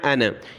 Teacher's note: نون کے بعد والا الف نہیں پڑھا جاتا